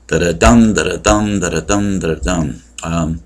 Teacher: But another one is the anapestic, which is like an iambic, but it's 3 syllables, and the emphasis is on the third